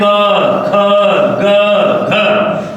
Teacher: जो एयर निकल रही है वो कंठ से निकल रही है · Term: कंठ वर्ण